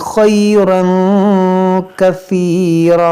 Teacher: तनवीन के बाद काफ है तो यहाँ पर इख्फा करेंगे और यहाँ पर दो ज़बर है, इसको पढ़ेंगे कसीरा, रुकेंगे तो कसीरा।